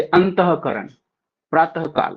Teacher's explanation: विसर्ग का उच्चारण ह जैसा होता